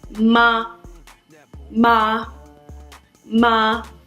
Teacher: The fourth tone is a falling tone, when you strongly disagree with something. No, no. This tone is like an angry command.